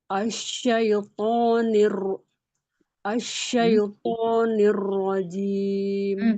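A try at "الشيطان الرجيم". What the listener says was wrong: Belum bunyi i, masih bunyi syait, syait. Bukan syait, syai. Asyai. Huruf to nggak pakai nafas, nggak to tapi to, lebih keras lagi ya. Asyaitoni. Tafashi bukan sofir. Kalau asai itu sofir. Kalau ini tafashi. Asyaitonir rajim.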